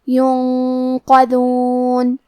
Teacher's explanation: اخفاء کا معنی ہے چھپا دینا تو ہم نون ساکن کو چھپاتے ہوئے اور غنہ کے ساتھ یہ حکم کو ادا کریں گے